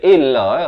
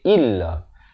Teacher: Hamzah baris bawah bunyi i, bukan bunyi e.